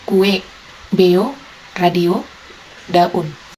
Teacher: dua vokal berurutan yang masing-masing vokal terdapat dalam suku kata yang berbeda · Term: Vokal rangkap